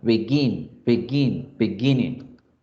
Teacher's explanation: El acento se hace en gin